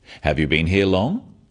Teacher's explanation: Questions that start with have you are yes-no questions, so they have a rising tone.